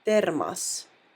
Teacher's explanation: you can clearly hear that the o letter is pronounced ah